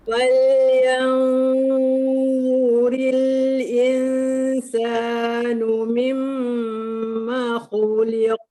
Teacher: Fal yanzuril tu rendah pangkal lidah sebab tu nampak lapang kan. Mimma khu angkat balik sebab tu bunyi tebal. Li turun balik sebab tu nipis.